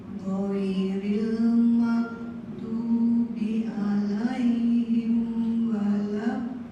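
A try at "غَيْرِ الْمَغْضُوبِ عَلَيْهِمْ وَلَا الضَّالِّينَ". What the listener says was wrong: Nah, jangan ditahan di L-nya dalam mendobelkan, tapi al-lin gitu aja. Al-lin. Ada dua, ini sudah aman ibu-ibu ya. Ini sudah aman, tidak ada kesalahan mengubah arti. Tinggal kefasihan itu ghainnya kalau bisa mengalir, bukan mak mau. Suaranya jalan. Oke, yang kedua, do-nya kurang panjang. Nah, panjangkan lagi.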